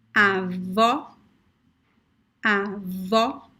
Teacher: the first one is very open o the last one is very very close